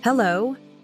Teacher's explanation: Notice how the H is pronounced with a small breath.